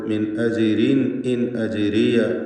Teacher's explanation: ചേർത്തോതുമ്പോൾ മിൻ അജിരീൻ ഇൻ അജിരിയ എന്നിങ്ങനെ റാഗുകൾക്ക് തർക്കീഖ് വരുന്നു